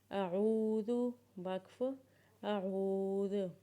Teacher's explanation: حمزہ زبر آ، اور عین کی آواز کو اپنے گلے سے نکالیں گے، اور عین کو جب واو کے ساتھ ملائیں گے تو اسے ایک الف کے برابر کھینچیں گے